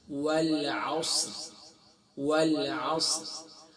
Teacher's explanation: والعصر، والعصر نہیں ہے، یہاں صاد ہے، صاد فل ماؤتھ پڑھیں گے، حروف مستعلیہ میں سے